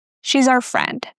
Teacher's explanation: Be careful with the S in she's, because here it's actually pronounced as the Z sound.